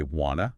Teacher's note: The word two just vanishes. It shrinks down, hides inside the word want, and becomes wanna.